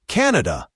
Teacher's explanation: pay attention to the stress. It's usually stressed on the first syllable.